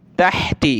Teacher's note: तहती, यह हा है, ताहा ज़बर तह, ता ज़ेर ती, तहती, गले से निकालना है इसको, हा को